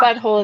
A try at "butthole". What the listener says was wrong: Y'all are all saying wrong. Butthole. No, drop the T.